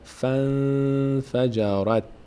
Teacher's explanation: الف خونده نمیشه، نون ساکنه، بعد از نون ف اومده، نه از حروف یرملونه نه از حروف حلقه نه به هست، اخفا میشه، یعنی نون از مخرج خودش ادا نمیشه، از بینی ادا میشه، به همراه مقداری توقف در هنگام مخرج، در هنگام تلفظش از مخرج بینی.